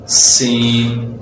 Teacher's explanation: ہماری زبان اوپر والے اور نیچے والے دونوں دانتوں کے درمیان میں آ جائے گی